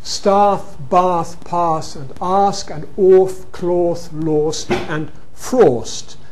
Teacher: you get bath broadening and cloth raising